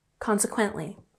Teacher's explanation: Consequently has emphasis on the first syllable